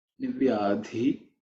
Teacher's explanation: the dhi, nivyadhi, is the fourth letter in the varga, so it has to be aspirated. · avyadhi also is fourth letter in the varga, which has to be aspirated.